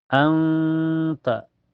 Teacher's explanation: Anta, di awal ayat ada hukum ikhfa hakiki atau lebih lengkapnya ikhfa akrob, karena makhraj nun dengan ta berdekatan ya. Cara bacanya nun sukunya disamarkan ke ta dan ditahan sampai terasa ke hidung.